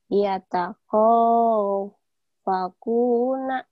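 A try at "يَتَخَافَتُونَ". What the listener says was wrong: Ya kho-nya jangan kogo. Kho coba lagi. Ya kho.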